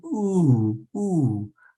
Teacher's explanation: The last syllable is indicated with what's called a circumflex accent, up and down, ooh, ooh.